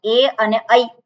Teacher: એ અને ઐ એનું ઉચ્ચારણ છે ગળું અને તાળવામાંથી થાય છે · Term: કંઠતાલુ